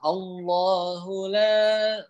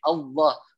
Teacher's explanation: pada lafadz Allah itu kan huruf lam menjadi tebal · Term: lam dibaca tebal